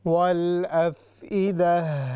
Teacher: قل هو الذي أنشأكم وجعل لكم السمع والأبصار، صاد ہیوی ہے، مستعلیہ میں سے ہے، پھر را بھی، والأفئدہ، یہاں پر ہا پر ہم روک کر گول تا سے کہتے ہیں